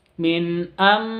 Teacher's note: Amba nun sukun nun mati bertemu dengan ba iklab. Jadi bacanya amba sifatnya mimnya keluar